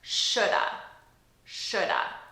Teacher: we take 2 words, which is should have, and we reduce them to sound like one word, shoulda. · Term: reduction